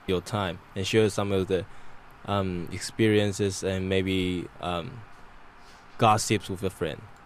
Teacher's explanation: an example of some pretty good chunking where he paused between different ideas